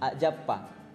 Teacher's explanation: A apostrof A jappa menghasilkan glottal stop, atau A jappa J-nya 2 A jappa.